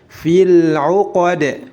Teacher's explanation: Fil 'uqad, perhatikan, jika ada mad tabi'i bertemu dengan lam sukun atau lam ta'rif, maka tidak dipanjangkan, harus dibaca pendek